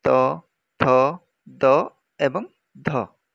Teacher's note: एही ध्वनि उच्चारण रे जिह्वा शिखर ऊपर दांत सहित मिलित हुए। तेणु एहाको दंत्य ध्वनि रूपे नामकरण कर जायछि।